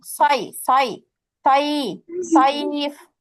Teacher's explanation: আইতে টান হচ্ছে, কিন্তু আলাদা করে ইয়ায় কিন্তু জের নিয়ে আসা যাবে না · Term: মাদ্দে লিন